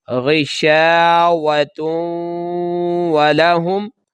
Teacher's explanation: یہ تا کو جب واو کے ساتھ ملائیں گے تو غنہ ہو جائے گا